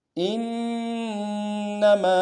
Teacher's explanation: تھا انما میں، حمزہ کو نون ساکن کے ساتھ ملانا ہے، نون ساکن کے اوپر تشدید زور دیں گے، اور میم کے ساتھ الف مدہ ایک الف دار میں کھینچیں گے